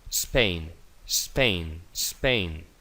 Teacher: Es una S sorda, no hay vibración de las cuerdas vocales. Entonces se pronuncia como una S en castellano.